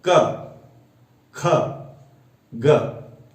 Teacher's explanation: जैसे प्रत्येक व्यंजन वर्ण में अ, आ स्वर की मात्रा मिली होती है या छुपी होती है। जैसे आप क बोलिए तो क का उच्चारण करने से अ का स्वर या अ की ध्वनि सुनाई देती है।